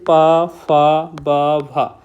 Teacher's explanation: जिन वर्णों का उच्चारण ओठों से होता है उन्हें ओष्ठ व्यंजन कहा जाता है। जैसे प फ ब भ तो आपने देखा होगा अगर आप उच्चारण कर रहे होंगे तो इनमें आपके पूरे ओठ का यूज किया जा रहा है।